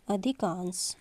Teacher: तो यहां पे ह्रस्व और ह्रस्व मिलकर के दीर्घ आ बन गया। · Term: दीर्घ संधि